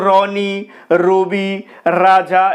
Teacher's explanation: র এই ব্যঞ্জন ধ্বনিটি উচ্চারণের সময় জিহবার অগ্রভাগ কম্পিত হয় র এ কারণে এই ব্যঞ্জন ধ্বনি কে বলা হয় কম্পিত ব্যঞ্জন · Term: কম্পিত ব্যঞ্জন ধ্বনি